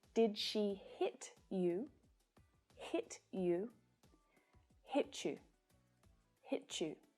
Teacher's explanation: So there is a change in these sounds when we link them together. The sounds t and y together can create ch.